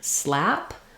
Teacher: the most open front LAX vowel